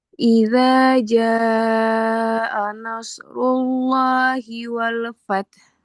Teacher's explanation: Jangan lupa shadnya tebal, runya tebal, Allahnya tebal.